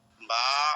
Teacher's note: স্বাভাবিক অবস্থায় মুখ যেমন ঠোঁট দুইটা মিলে থাকে, মেলানো ঠোঁট খুলে দিলে হয়ে যায়।